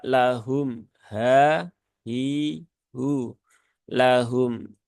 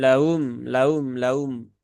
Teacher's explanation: masih banyak membaca dengan laum laum laum harusnya dia lahum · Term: huruf ha